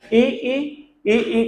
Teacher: ई का उच्चारण स्थान तालु को जिह्वा स्पर्श करती है तब इनका उच्चारण किया जा सकता है